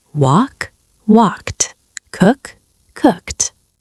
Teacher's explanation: It's just one syllable with a t sound at the end.